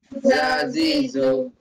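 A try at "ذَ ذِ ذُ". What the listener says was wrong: Reduce the length a little bit.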